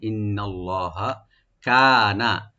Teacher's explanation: কাপটাকে টানবেন একালিফ, নুনে একদম টান নাই, নর্মাল করে পড়তে হবে